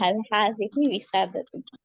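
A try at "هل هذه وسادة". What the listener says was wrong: हाँ, विसादतुन भी नहीं कहेंगे, हम वक्फ करेंगे। हल हाज़िही विसादा, विसादा किसको कहते हैं?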